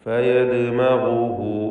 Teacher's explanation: ദാലിൻ്റെ സുക്കൂനിനെ ഖൽഖല സൂറ നൽകി ശബ്ദം ഹറക്കത്ത് പോലെ ചലിപ്പിക്കണം